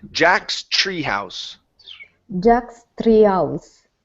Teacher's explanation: instead of saying three, give me a CHR. Remember, the TR is a CHR.